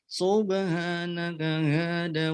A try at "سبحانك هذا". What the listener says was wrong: Ulang hadza, subhanaka hadza, zanya dibaca panjang.